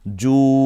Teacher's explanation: পেশের পরে ওয়াও সাকিন, একেবারে সোজা হিসাব, আমরা এক আলিফ টেনে বলবো এখানে জু। এরপরে শেষে আইন আছে, এখানে আমরা যদি থামি তাহলে একটু কণ্ঠনালীতে চাপ দিয়ে বলবো জু, জু।